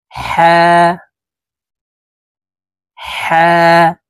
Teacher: হা হরফ হালকের মধ্যখান থেকে উচ্চারণ হবে, কারণ হার মখরজ হালকের মধ্যখান থেকে হবে।